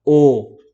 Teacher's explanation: अर्ध संवृत स्वर स्वरों के उच्चारण में मुख द्वारा कम सकरा होता है